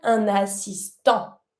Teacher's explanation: Don't pronounce the T, you stop at the an sound. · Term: en sound